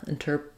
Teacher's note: our T changes to a flap, interpreted, and we have the id ending